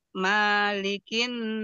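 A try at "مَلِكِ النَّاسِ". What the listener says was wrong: E huruf mimnya dipendekkan Bu malikinas Coba ulangi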